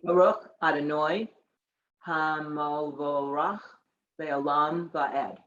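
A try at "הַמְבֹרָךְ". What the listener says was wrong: Okay, so it's Hamivorach. There's no O there. The two dots signify that it's just the sound of it. So it's Hamivorach.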